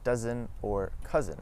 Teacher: the s in between two vowels as well as the zed sound make a z